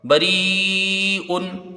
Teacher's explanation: یا ساکن سے پہلے زیر ہے، را کو یہاں باریک پڑھیں گے، اور حرف مد کے بعد حمزہ اسی کلمے میں ہے، مد متصل ہوگا، بری ان، یہ دیکھیں۔